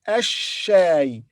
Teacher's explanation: it's a shay preceded by al, the, but lam here is silent, so we say ash-shay, then shadda on sheen, so we say ash-shay. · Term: Lam is silent